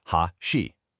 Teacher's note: For chopsticks, the pitch starts high and then it drops, ha-shi. But for a bridge, it starts low and then it rises